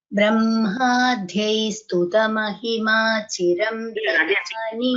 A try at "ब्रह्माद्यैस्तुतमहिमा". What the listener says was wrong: I think last time I told Brahmadyaihi is not dha, it is alpapanada, like vidya. You don't say vidya, it is vidya.